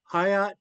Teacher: the sound is in between a d and a t. So it could be spelled with a d or a t.